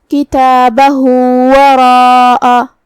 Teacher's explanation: ہاں پہ الٹا پیش ہے، یہاں حکم ہے مد صلہ صغرا، لہذا ہم اپنی آواز 2 مد کے برابر لمبی کریں گے